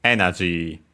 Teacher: the accent is just like in English on the E, so on the first mora, energy high and then everything else low.